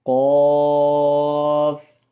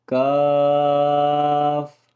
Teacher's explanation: اس کو ہم نے موٹا کر کے پڑھنا ہے اور اس کو ہم نے باریک کر کے پڑھنا ہے